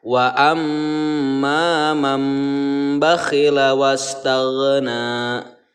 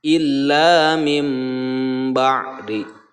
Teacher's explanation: nun mati ditukarkan ke mim, kemudian dibacanya didengungkan dan ditahan selama 2 harokat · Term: iqlab